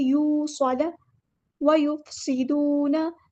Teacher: सीन में सीटी लेकर आनी है